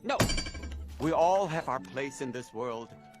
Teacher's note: po answers his dad in a relatively perfunctory Way by using a level tone